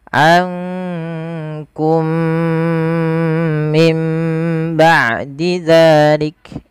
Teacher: Maka di sini diwarnai dengan warna hijau, menandakan dia huruf mim yang pertama dimasukkan kepada mim yang kedua dan ditahan dengan 2 harokat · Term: idgham mimi